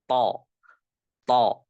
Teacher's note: huruf tho itu ujung lisan bertemu dengan tempat keluarnya gigi seri bagian atas